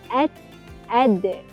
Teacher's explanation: Ha hujung lidah dengan permulaan gigi kapak atas. [muzik] Keluarnya huruf ta dan huruf dal.